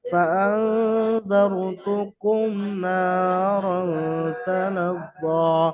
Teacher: মিম সাকিনকে বিনা গুণায় জাহির করে পড়তে হবে।